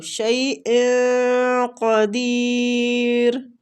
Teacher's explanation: شیء پہ ہم نے اخفا کرنا ہے تنوین کا، آگے قاف کے مخرج کے قریب جا کے کرنا ہے